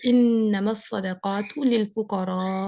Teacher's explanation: یہ مد متصل ہے نا، یہاں پہ 4 کاؤنٹ اسٹریچ کریں گے، 4 حرکات اسٹریچ ہوگا